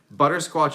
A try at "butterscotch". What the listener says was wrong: Do you keep saying butterscotch? You said squatch.